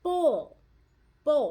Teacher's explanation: In the word bowl, it doesn't say ow, it says oh. Bowl. Bowl, and you hear the L on the end. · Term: long O